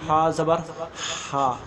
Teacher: گلے کی وہ جگہ ہے جہاں ہمیں اکثر تھوڑی سی کچھ خراش رہتی ہے، تھوڑے سے مطلب یہ خرشی کی طرح ہوتی ہے، تو وہاں سے یہ ہا نکلتا ہے اور عین نکلتا ہے۔